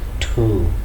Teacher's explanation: while pronouncing this word two we release a strong puff of air therefore it is aspirated